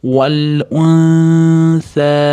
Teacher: Val unsa, nunda s ga ixfo qilamiz. Val unsa, s dan keyin alif mad, alif mad ni ustida to'lqin ham birga kelayotgan uchun ko'proq cho'zamiz. To'rt, besh cho'zsak yaxshiroq bo'ladi.